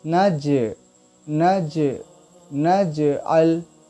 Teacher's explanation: नज में जीम जो है वो हुरूफ़ क़लक़ला है, इसलिए इसकी आवाज़ लौटेगी, नज नज नज अल।